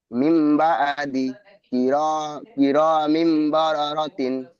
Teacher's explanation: মিমের নিচে তানবিন আছে, তানবিনের পরে হুরুফে হালকির, হুরুফের ইগলামের বা আছে। তাই তা তানবিনকে মিমের দ্বারা পরিবর্তন করে এক আলিফ পরিমাণ গুন্নাহ করে পড়তে হবে, একে ইগলাব বলে।